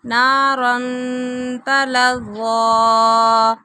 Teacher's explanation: نارن تنوین کے بعد تا آ گیا، یہاں پہ اخفا ہو رہا ہے